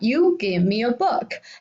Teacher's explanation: The end of the sentence has a rising tone. However, if we are simply narrating something, we can say that you give me a book. It has a falling tone in the end.